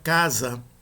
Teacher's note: o primeiro A, ele é um pouco mais longo do que o segundo A